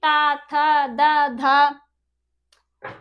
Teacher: दांतों को टच कर रही है हमारी जीभ